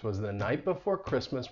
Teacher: Christmas has two syllables, and the stress is going to be on the first syllable